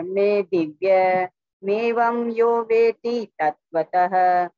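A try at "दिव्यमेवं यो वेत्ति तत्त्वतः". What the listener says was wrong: दिव्य नहीं है, मेवम नहीं है, एवं है, वो एक ही मात्रा है ऊपर, तो दिव्यम ये पूरा इकट्ठा शब्द है। दिव्यम और फिर एवं, एवं यो वेत्ति तत्वतः।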